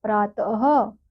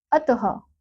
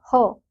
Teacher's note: विसर्ग का जो उच्चारण है वो हम ह के समान करते हैं